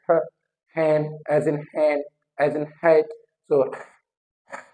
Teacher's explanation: likewise ये जो glottal है हमारा ह का साउंड ह, ये जो ग्लोटिस से प्रोड्यूस होता है